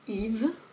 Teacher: Yves qui est le prénom, on ne prononce pas le S